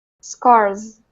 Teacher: So then if we put an S, it actually is going to be like a Z.